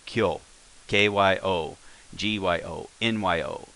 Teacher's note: But let's say ki and this smaller. Instead of being ki yo, it's blended together. It becomes a kyo. It's all one syllable.